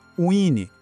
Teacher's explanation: É quase como se tivesse um i bem discreto ali no meio, sabe? Uine.